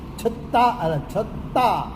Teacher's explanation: એમાં સિંગલ ત છે પણ ડબલ ત બોલે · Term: વ્યંજનો બેવડાય છે